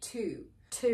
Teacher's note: you don't pronounce a u sound there so it doesn't sound like to you it sounds like two two basically like number two we also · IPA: /tu:b/